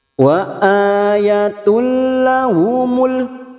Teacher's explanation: Wa ayatul, duma tanwin bertemu lam, nun sukun atau tanwin yang bertemu dengan dua huruf ini, yaitu huruf lam dan huruf ro, namanya bacaan idgham bila guna, hanya masuk tanpa mendengung, tanpa ditahan lama-lama